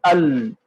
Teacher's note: ال ایک دم آ کر آواز لام پر دیکھے رک گئی ہے، ایک دم آواز اور سانس بھی رک گیا، ایک دم سختی آ گئی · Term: صفت جہر